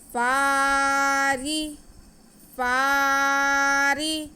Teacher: فا کے بعد کو ہم کھینچیں گے. آگے را کے نیچے زیر ہے, را باریک پڑا جائے گا.